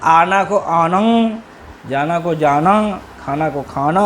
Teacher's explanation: تو انفی آوازیں، نون غنہ والی آوازیں دونوں جگہ، کھڑی بولی میں بھی اور دکنی اردو میں بھی